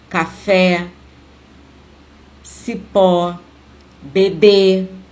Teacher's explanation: Então, de acordo com a posição da sílaba mais forte, classificamos como oxítonas. A sílaba tônica é a última.